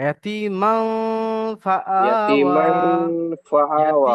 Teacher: আচ্ছা, এখানে ইয়াতিমান ফা যখন আমরা বলছি, আমরা মান শব্দটা, এই নুনের যে জিভের উচ্চারণ, এটা টাচ হবে না। আমরা মান মান বলে নাকের মধ্যে নিয়ে চলে যায়